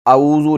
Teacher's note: زال کو نرمی کے ساتھ ادا کریں گے، سیٹی کی آواز بالکل نہیں